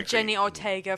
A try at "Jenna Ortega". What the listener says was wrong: Actually, it's Jenna Ortega. You keep saying Jenny. Jenna. Yeah, Jenna, not Jenny.